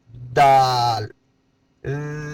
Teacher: دال دال کا مخرج زبان کی نوک اوپر والے دانتوں کے جڑ کے قریب سے لگے گی